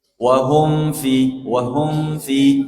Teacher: Kemudian di sini jemaah wahum f hum itu mim yang disukun bertemu fa mimnya dibaca izhar tanpa ada dengung